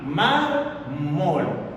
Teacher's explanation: Fíjate, tiene dos sílabas, un tipo de palabra bisílaba. La mayor fuerza de la voz, la sílaba tónica está en la penúltima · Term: grave o llana